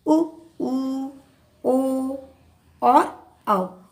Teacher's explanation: जिन स्वरों के उच्चारण में होठों की आकृति गोलाकार हो जाती है, यानी होठ आपके गोल हो जाते हैं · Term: वृत्तमुखी स्वर